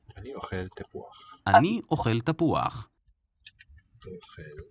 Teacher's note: So we wouldn't hear that as starting with a vowel sound, but from the logic of Hebrew writing, it starts with that glottal stop, written aleph, and then u, used here as a vowel letter.